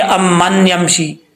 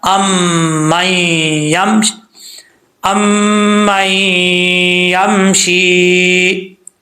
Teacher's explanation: جب حمزہ کو میم سے ملائیں گے پھر میم کو جب یا سے ملائیں گے تو یہ جو نون ہے بیچ میں یہ نون گر جائے گا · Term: ادغام یرملون